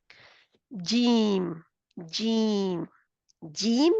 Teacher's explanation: یہ حروف زبان یعنی کہ زبان کے درمیانی حصے سے زبان کے کہاں سے زبان کے درمیانی حصے سے اس کے بالمقابل درمیانی تالو سے ادا ہوتا ہے. زبان کا درمیانی حصہ بالمقابل زبان کا تالو کا درمیانی حصہ جب اوپر اٹھتی ہے زبان تالو کی طرف تو تالو سے جا کے جڑتی ہے جی.